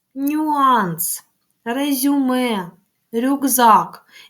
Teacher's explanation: наша вимова є злитою і ми звук й не чуємо